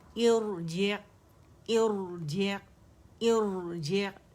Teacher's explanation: रा सुकून से पहले हमारे पास हमजा अल वसल या हमज़तुल वसल आएगी तो ऐसे हमज़तुल वसल को हम कसरा से उठाएंगे और ऐसी रा मोटी पड़ी जाएगी